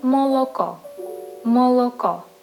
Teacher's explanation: You don't ignore any of the sound. Even though we have stress only in one place, you pronounce every vowel sound.